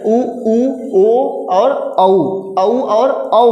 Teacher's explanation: क्या हो जैसा आपका जो ओठ कैसा हो, वृत्त के जैसा बन जाएगा। तो मतलब से आप बोलेंगे ऊ बोलेंगे तो देखेंगे आपका जो ओठ है, जो आपका ओष्ठ है क्या है, वो वृत्त जैसा बन रहा है। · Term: वृत्तमुखी स्वर